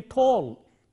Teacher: we have to make sure that their lips are rounded and then that word will get the real English flavor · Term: rounded vowel